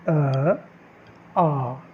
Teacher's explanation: जब आप उच्चारण करेंगे इनका तो कंठ से आवाज़ आती है